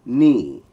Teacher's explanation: Now the Thai word for this is knee with a falling tone.